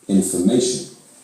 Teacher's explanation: in information, the syllables before and after the stressed syllable reduce to schwas.